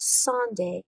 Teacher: sun is stressed and day is unstressed